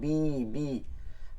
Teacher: অনেকে পড়ার সময় ফাসাব্বিহ এরকম বেহ হয়ে যায় এটা যেন না হয় চিকন করতে হবে বি